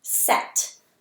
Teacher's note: set has the short e sound and it's closed in by the T so that is also enclosed syllable I'll mark it with a